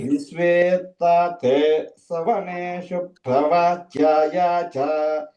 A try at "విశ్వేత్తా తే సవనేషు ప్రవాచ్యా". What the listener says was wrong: అక్కడ ప్రభాచ్యాయ చ దీర్ఘం చూస్తున్నారండి.